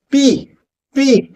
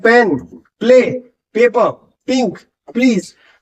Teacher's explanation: दोनों होठ बंद करने होते हैं प्रेशर बनाना पड़ता है होठ खोल के हवा बाहर निकालनी पड़ती है · जो लिप्स है वो आपके बंद रहेंगे और जब आप साउंड करने की कोशिश करोगे तो आपको लिप्स खोलने पड़ेंगे